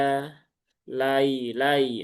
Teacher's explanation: Masih ada huruf hamzah yang terbaca secara ringan.